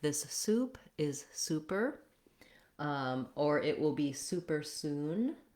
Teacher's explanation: the letter U in super is the tense rounded U, just like in the word soup